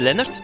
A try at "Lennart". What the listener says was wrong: Lennart, het is met een A.